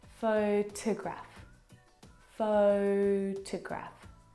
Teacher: the second syllable is unstressed and it is reduced down to the schwa sound a photograph photograph it's very short it's very lazy it's not